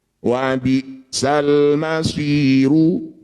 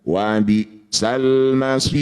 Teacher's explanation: Maqabi bertemu huruf hidup kemudian dihentikan, disebut bacaan namanya mad arid disukun. Cara bacanya si kita panjangkan 6 harokat, kemudian huruf yang terakhir kita sukun. Wa bi'sal masiru, ketika dihentikan wa bi'sal masir.